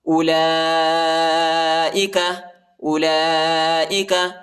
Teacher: لام پر جو ہے کھڑا زبر اور بڑا مد آیا ہے، اس کو تقریباً 3-4 سیکنڈ تک کھینچیں گے